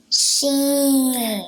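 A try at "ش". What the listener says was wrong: Yes. Did you guys hear how she pronounced the letter? Make sure you pronounce it like that.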